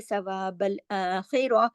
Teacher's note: اگر اس پہ رکتے ہیں تو یہ تا جو ہے تا، یہ تا مربوطہ تا کہلاتی ہے، تو یہ ہاں میں بدل جاتی ہے ، اگر رکیں گے تو پڑھیں گے ثواب الآخرہ، اور اگر